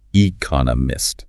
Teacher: how to pronounce economist, 4 syllables, stress on the second one